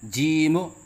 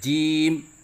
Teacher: تو اس غلطی کو درست کرنے کا آسان طریقہ یہ ہے کہ جیم کے آخر میں میم کی ادائیگی کے وقت ہونٹ ایک دوسرے سے فوراً الگ نہ کریں، بلکہ ایک لمحے کے لیے بند رکھیں، جیسے جیم۔ تو اس طرح کرنے سے انشاءاللہ قلقلے کی غلطی ختم ہو جائے گی۔